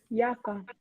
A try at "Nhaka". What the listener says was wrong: Giaca. Disse Giaca. Gia, não é Ia. Giaca.